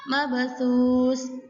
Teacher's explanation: Dipantulkan dengan tipis karena berada di tengah kalimat. Jadi mabthus. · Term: huruf qalqalah